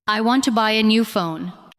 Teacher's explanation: The important words are want, buy, new, and phone. The other words support them.